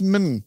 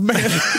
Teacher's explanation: you have the word man in the word human, but it's pronounced min instead of man.